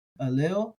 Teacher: you could hit somewhere between the A and the E, aleu. So you're able to get sort of a mix or a hybrid there.